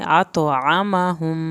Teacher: मीम की शत पे देर लगाएं एक अलिफ के बराबर